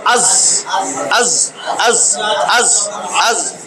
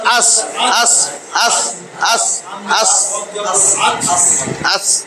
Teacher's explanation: জিহ্বার আগা, এই যে আমার নিচের দাঁত, নিচের দাঁতের গোড়ার সাথে মিলা উচ্চারিত হবে